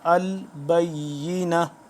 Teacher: آخر میں جب وقف ہوگی تو یہ ہا میں بدل جائے گا